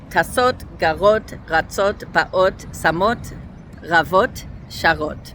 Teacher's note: And then feminine plural also gets its typical ot ending with a cholam, maleh, and then a taf. And again, everything is stressed on the last syllable.